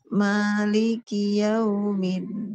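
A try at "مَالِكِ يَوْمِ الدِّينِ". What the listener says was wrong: Cuma dianya aja kurang dibuka mulutnya. Nah, Ibu, ini kan ada kelingking. Kelingking Ibu sendiri ya. Kelingking Ibu digigit di depan. Gigi seri ketemu gigi seri gini. Nah, itu buka mulutnya seperti itu. Kalau Ibu tadi kurang. Jadi Ibu kita baca Maliki iya. Suaranya jadi iya. Harusnya kan iya.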